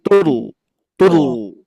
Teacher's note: menempel ke ee apa namanya langit-langit gusi gigi Sari atas dan pangkal lidah mengangkat makanya ditebalkan ya tidak Tur tur tapi Tur tur tebal gitu ya tebal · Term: dibaca tebal